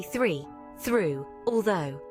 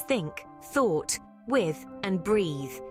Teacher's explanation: the sound is unique because it requires you to place your tongue between your teeth